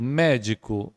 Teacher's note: Médico, a sílaba forte é mé